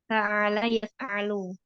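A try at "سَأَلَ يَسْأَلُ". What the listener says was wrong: A-nya bukan ain ya. Sa'ala yas'alu.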